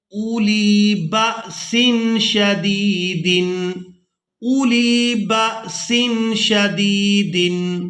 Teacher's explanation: اب یہاں پر ہم نے حمزہ کو بغیر کھینچے ادا کرنا ہے کیونکہ واو خالی ہے، اس کے اوپر کوئی حرکت نہیں ہے، تو یہاں پر ہم نے واو کو ادا نہیں کرنا، یہ صرف رسم الخط ہے۔